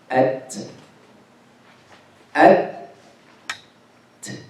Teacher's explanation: The sound is not flowing because it's shadid